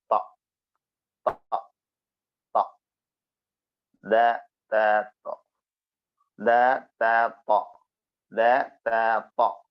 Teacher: പറയേണ്ടത് ഫിത്തർ താ ഹിത്ത ഹിത്ത ഹിത്ത നാവിൻറെ തലയും മേലെ മുൻപല്ലിന്റെ മുരടും നാവിൻറെ തല മേലെ മുൻപല്ലിന്റെ മുരട് ഭാഗം